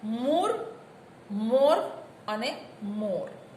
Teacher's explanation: જીભના પૃષ્ઠભાગથી ઉચ્ચારાતા સ્વરો તરીકે 3 સ્વર ઉ, ઓ અને વિવૃત ઓ આવે છે.